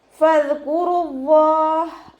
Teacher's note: ഫദ്കുറുല്ലാഹ്, ഫ ലൈറ്റാക്കിയിട്ട് ഉച്ചരിക്കുക. മേലെ മുൻപല്ലിൻ്റെ അറ്റം താഴെ ചുണ്ടിൻ്റെ ഉൾവശത്ത് വെറ്റായ ഭാഗത്ത് വെക്കുക കേട്ടോ.